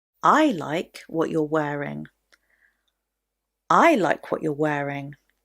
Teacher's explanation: I put the stress at the beginning on the word I.